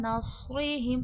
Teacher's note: صاد مستعلیہ ہے، موٹا حرف ہے، موٹا کر کے پڑھا جائے گا اور حرف صفیر بھی ہے، سختی سیٹھی بھی کی بھی آواز آئے گی۔